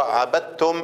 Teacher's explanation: الدال والتاء مخرجهم واحد وصفاتهم مختلفة. أدي معنى التجانس، يعني مخرجهم واحد والصفات متباعدة، تمام.